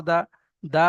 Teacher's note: দা উ দা জবর দা দা উদা দালের উপর জবার আছে জবার হারাকাত হারাকাতে পড়া তাড়াতাড়ি পড়তে হবে টান দেয়া নিষেধ